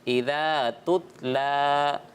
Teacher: अलिफ मद्दा तो होगा, लेकिन उसकी कितनी मिकदार होगी? 1 अलिफ, यानी 2 हरकत की मिकदार। इज़ा तुतला, लाम के ऊपर खड़ा, तुतला।